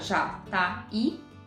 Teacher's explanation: Então você separa já, tá, i. Esse i fica isolado em uma sílaba, é tônico e forma hiato com a vogal anterior